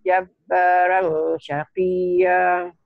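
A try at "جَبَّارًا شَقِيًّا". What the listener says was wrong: Jangan jabaran, jabarong aja ya. Bunyi o. Jabarong syaqiyya ya.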